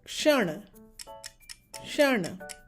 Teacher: Ksh plus the retroflex, which I have highlighted in blue. Retroflex sound, as in the tongue touches the roof of the mouth with a rolled tongue sound.